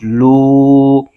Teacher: قاف پر پیش ہے اور آگے واو ساکن، یہاں پر واو مدہ ہو رہا ہے، اس کو ایک الف کھینچ کے پڑھیں گے۔ قاف حروف مستعلیہ کا حرف ہے، اس کو پر یعنی موٹا کر کے پڑھیں گے۔